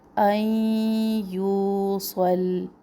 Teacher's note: دونوں آوازوں کو ملانا ہے، نون ساکن کی آواز کو ظاہر نہیں کرنا. این یوصل، یو و مدہ.